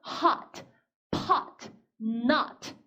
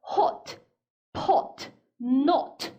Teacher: 영국 영어로 넘어가면은 입을 같이 쫙 벌리는 게 아니라 오히려 우리말에 오에 가깝게 약간 좀 오므린 입 모양에서 나는 소리가 나죠